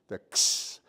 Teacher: It's like almost like a x. Your mouth makes the S more than the K.